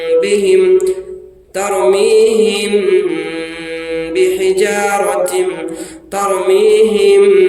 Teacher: हिम कह के नाक में स्टॉप करके रखेंगे थोड़ा देर आवाज को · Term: इक्फा शफवी